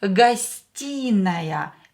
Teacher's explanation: Here O will be pronounced as A because E is stressed and O is not stressed.